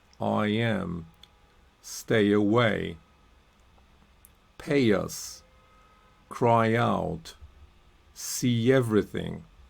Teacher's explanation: linking, we can link with the off-glide Y, right? So for example, I, A, or E, the off-glide is E, right?